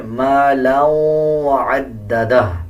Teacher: آگے دیکھیں مالا وعددہ، دو زبر دو زیر یا دو پیش کے بعد واو شد والا آ رہا ہو تو غنہ کیا جاتا ہے اور غننے کی آواز کو ناک سے نکالا جاتا ہے